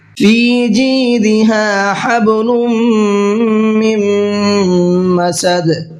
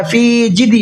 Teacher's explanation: فی کو بھی کھینچنا ہے اور جی کو بھی کھینچنا ہے، اس لیے کہ دونوں جگہ پر یائے مدہ ہے اور دونوں کھینچ کر کے پڑھے جائیں گے.